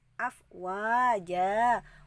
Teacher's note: Wa dibaca mad tabi'i, panjangnya 2 harokat.